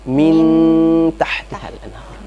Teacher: Kemudian ada ketika nun mati ketemu ta. Ini kan jauh, ikhfanya sudah jauh. Sehingga yang terdengar cuma nunnya.